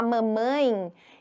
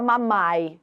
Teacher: o ditongo nasal o som sai pelas fossas nasais